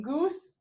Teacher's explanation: it's oo which is high back in goose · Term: cardinal vowels